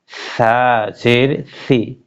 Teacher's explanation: সা পাতলা জিহ্বার আগা সামনে উপরে দুটার আগের সঙ্গে লাগাইয়া